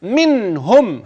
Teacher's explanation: منهم هتسكن وتظهرها كويس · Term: اظهار